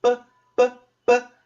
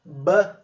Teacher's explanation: o P não exige a participação das cordas vocais, mas o B necessariamente precisa. Então, se você colocar aí a mão na garganta e tentar falar B, necessariamente as cordas vocais começam a trabalhar.